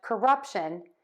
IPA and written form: kəˈrʌpʃən (CORRUPTION)